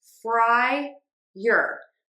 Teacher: Let's start with the fry syllable. That is our stressed syllable. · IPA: /ˈfraɪər/